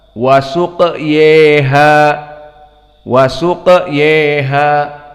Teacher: qiraah dari Al-Kisai maka dibaca dengan al-imalah al-kubra. Maka dibaca wasuq yeha, wasuq yeha.